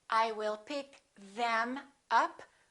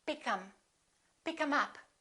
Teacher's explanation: The TH also gets reduced.